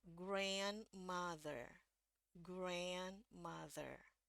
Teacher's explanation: jadi kalau kita baca dari awal grand mother ya yang Amerika grand mother ini yang suaranya paling tinggi ya jadi di sini naik nadanya